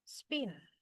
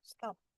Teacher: Jadi ketika eh diikuti oleh em bunyi ya, diikuti oleh bunyi s ya, ada spin ya, spin ada stop ada scan ya. Jadi ini tidak menjadi aspirated, tapi tetap bunyinya eh unaspirated